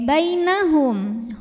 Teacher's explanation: Karena ya sukun sebelumnya didahului baris fathah, maka dibacanya cukup kita lembutkan. Bainahum, hanya pendek mimnya jelas. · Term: huruf lin